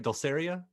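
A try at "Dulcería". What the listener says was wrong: Dulceria. Casi, no, es casi, Dulceria. Dulceria. You just put the accent in the wrong place. Dulceria.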